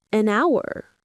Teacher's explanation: The word hour starts with an ow sound, which sounds like a vowel. So we say an hour.